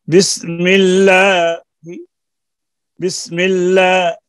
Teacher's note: جیسا بسم اللہ جب ہم نے ختم کیا تو میم پر چھوٹا سا کسرہ پڑھ دیا جائے, غور سے سنیے, بسم اللہ, بسم اللہ کہ ختم پر میم پر بہت ذرا سا زیر پڑھ دیا جائے کہ جس کو بہت پاس والا سن سکے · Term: وقف بالروم